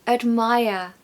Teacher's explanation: We haven't got a strong vowel sound in that first syllable because the second syllable is stressed. And the rule goes that the schwa sound falls on the syllable that is unstressed.